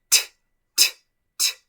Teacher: Mi lengua baja y bota aire. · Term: el sonido de la T